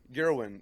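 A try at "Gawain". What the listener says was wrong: Gwen. It's like Gerwin. It's no R in his name. It's Gwen.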